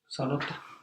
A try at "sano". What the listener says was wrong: Well, almost. Without the T. Without the T. But with the A.